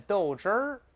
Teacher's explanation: 豆汁再加个▁r▁就更像北京话，叫豆汁儿。豆汁儿勾舌头了